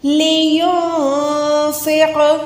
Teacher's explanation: نون کو چھپا کے ادا کریں گے، قوف پہ قلقلہ کریں گے۔